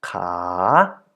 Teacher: So if you add to this consonant the long a vowel, as we did before with the examples above, you end up with the syllable ka in a rising tone.